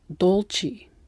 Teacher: that an American speaker might have an accent when speaking Italian they'll use the dark L when they shouldn't